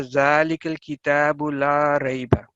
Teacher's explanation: وہ یہ دیکھیں کہ یہ آیت آپ کے سامنے لکھی ہوئی ہے، ذالک الکتاب لا ریب۔ اب یہاں پہ اگر لا جو ہے اس کے لام کے بعد الف ہے، اس کو ہم نے کم از کم 2 سیکنڈ تک پڑھنا ہے